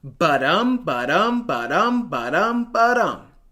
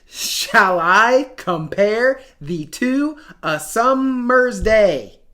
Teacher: The syllables are divided into 5 pairs called iambs, or iambic feet. An iamb is a metrical unit made up of one unstressed syllable followed by one stressed syllable.